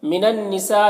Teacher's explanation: من النساء، یہاں پر نون مشدد ہے تو غنہ ہوگا، اور سا میں جو مد ہے یہ مد متصل ہے، اسے 3-4 الف کے برابر کھینچ کر پڑھیں گے